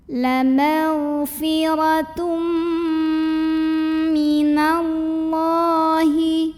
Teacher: Maka cara bacanya tanwin dhammah ini dileburkan ke mim masuk disertai dengungan. Jadi bunyi M-nya tahan. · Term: idgham bi gunnah